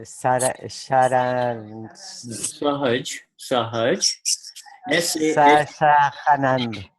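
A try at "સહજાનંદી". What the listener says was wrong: Sahaja. In Gujarati, we don't, for the J, we don't say ha, we say ja. Sahaja. Sahaja. You're so used to the pronouncing, whenever you see a J, you say ha, you see? Sahaj Anandi. It's made of 2 words.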